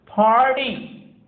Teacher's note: PARTY, here we say party, but in American English RT जब साथ में आता है तो इसे भी ड पढ़ते हैं